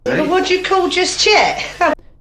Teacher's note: Turning the dia and tia clusters into affricates, ch and j. Yod coalescence across word boundaries.